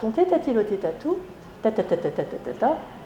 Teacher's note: il faut que ces lettres ne soient pas dentales, mais ce qu'on appelle apicodentales, juste derrière les incisives du haut